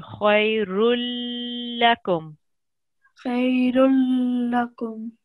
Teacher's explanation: join this tanween with the la mushaddid, and there should be no nasal sound